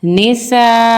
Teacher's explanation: मद्द मुत्तसिल हो रहा है क्योंकि हमज़ा एक ही हर्फ में आ रहा है, तो इसको हम 4 अलिफ के बराबर खींचेंगे